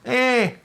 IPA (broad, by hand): eː